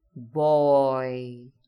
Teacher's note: Hear how the vowel shifts from O to I.